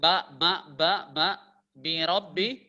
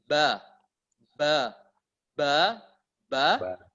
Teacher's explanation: berarti huruf itu salah karena masuk di rongga hidung